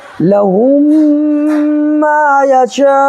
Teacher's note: واو ساکن سے پہلے پیش ہے تو وہ مدہ ہوگا، یہاں پر بھی ایک الف برابر کھینچ کر کے پڑھیں گے